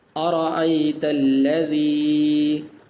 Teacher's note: را ہے، اس کے اوپر زبر ہے، تو اس را کو پر کریں گے، موٹا کر کے پڑھیں گے اور اس کو اس طرح پڑھیں گے، ارأیت الذی۔